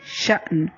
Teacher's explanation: شأن، شین حمزہ زبر، حمزہ ہے جھٹکے سے پڑھیں گے